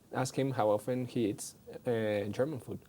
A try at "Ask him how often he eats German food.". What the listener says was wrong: No, tu entonación está mal. Ask him how often he eats German food.